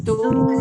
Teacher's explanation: Dia kena rapat dia lah. Bila rapat bibir, suara tak bunyi, naik hidung.